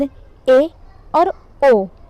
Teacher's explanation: ए और ओ ये दोनों अर्ध संवृत कहलाते हैं, क्योंकि हमारा मुख थोड़ा सा ज़्यादा खुलता है